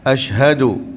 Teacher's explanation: ha asyhadu, pastikan bunyi daripada dada